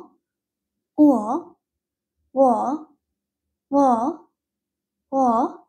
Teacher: Korean ভাওয়েলটি কিন্তু উ অ্যান্ড অ এর সমন্বয়ে গঠিত। উ প্লাস অ, উ, ও, ও, ও।